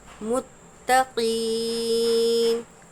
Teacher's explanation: متقین میں تا پر تشدید ہے، دو مرتبہ ادا کریں گے۔ متقین۔ قاف یا زیر قی، نون زبر نو۔